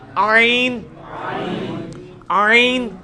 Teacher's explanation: ہا کا مخرج جو ہے نا یعنی وسط حلق، ادھر ہی سے یہ آئین بھی نکلنا ہے